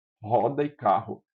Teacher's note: Aqui a gente pronuncia isso como uma aspiração, roda e carro quando R é inicial e quando ele é duplo.